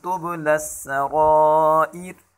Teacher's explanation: وقفاً میں اس دوسری را کو باریک پڑھیں گے